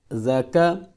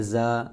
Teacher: زال کو نرمی کے ساتھ پڑھنا ہے، اس کی سیٹی کی آواز نہیں آنی چاہیے ، جس طرح لوگ پڑھتے ہیں زا، یہ غلط ہے۔ را